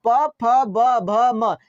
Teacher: प फ ब भ म, ये आपके होंठ से निकलता है, लिप से निकलता है। तो इसका उच्चारण स्थान हो गया ओष्ठ।